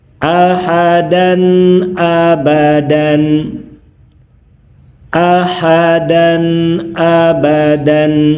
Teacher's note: Jelas bunyi tanwin an-nya. Saat bertemu dengan huruf halq, huruf yang keluar dari tenggorokan